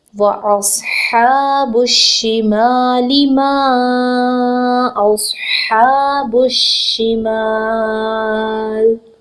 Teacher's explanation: وقف کی صورت میں جب ہم لام کو ساکن کریں گے تو ہم 2 سے 6 حرکت طول دے سکتے ہیں. میم زبر الف ما، 2 سے 6 حرکت اس کو لمبا کر کے پڑھ سکتے ہیں. 6 حرکت لمبا کرنا افضل ہے اور قرآن پاک کی تلاوت میں یہ خوبصورتی بھی پیدا کرتا ہے.